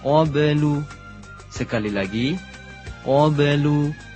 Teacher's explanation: Ba sukun hukumnya qalqalah, yaitu memantulkan bunyi huruf ba.